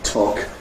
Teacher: Well, some of the things that are sort of obvious and separate like ‘aspiration’, if we had the word /tɒk/, you get strong aspiration of the /t/ · If we had the word talk, you get strong aspiration of the T